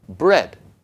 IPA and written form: bɹɛd (bread)